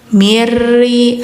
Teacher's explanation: nunnya hilang ya, tidak dibaca, langsung ke ro, idgham ya, hukumnya idgham bila gunnah.